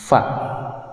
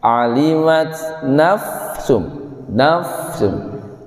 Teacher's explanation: Caranya bibir bawah disentuhkan ke giseri yang dalam atas. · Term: huruf fa